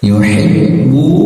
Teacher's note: ba bertasdid tekan saja dan putuskan suaranya, tapi ingat jangan sampai disambar ya.